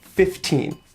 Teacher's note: you could put the stress on the second syllable 15 but most common I think is to put an even stress on both syllables